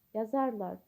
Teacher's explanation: vurğu lar şəkilçinin üzərində deyil